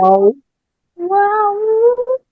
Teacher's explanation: ওয়াও দুই ঠোঁট গোল করে পাতলা আওয়াজে।